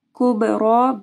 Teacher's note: با کے اوپر جو ہے جزم ہے تو با کے اوپر کلکلہ ہوگا اور را بھی جو ہے موٹی پڑ جائے گی۔